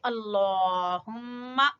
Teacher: لفظ اللہ کو پور پڑھیں گے، اللہم، میم مشدد کا غنہ کرتے ہوئے فا سے ملائیں گے